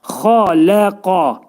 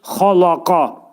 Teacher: Xa qalın, ləm incə, qaf qalın. Ona görə burada xaləqa şəklində deyirik.